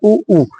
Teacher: तालव्य ये बात आपको ध्यान रखनी है फिर उ और उ उ और उ का उच्चारण स्थान क्या होता है हमारे होट यूज होते है